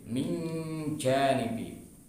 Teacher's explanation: karena bertemu huruf jim maka kemudian kita makhrajkan ke huruf jim